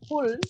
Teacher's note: কিন্তু বাংলায় যখন আমরা বলবো ফুল, ওষ্ঠবর্ণ কিছুটা ঠোঁট আটকে থাকবে, বাতাস বের হবে না।